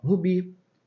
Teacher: O bi é a sílaba tônica. Repare que não tem acento, mas é a sílaba tônica, a sílaba forte dessa palavra.